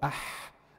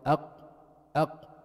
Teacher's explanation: when you say أح, you are not able to block the sound.